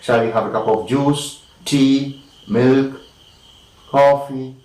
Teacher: alternative questions again it is rising the sound is going up